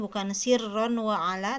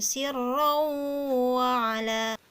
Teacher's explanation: jadi bunyi huruf nun nya itu dibuang langsung masuk ke huruf wow · Nah, di situ ada tanwin bertemu dengan huruf waw ya. Jadi bunyi n pada tanwinnya itu dibuang langsung masuk ke huruf waw. Jadi bukan sirron wa ala tapi sirrau wa ala. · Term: Idgham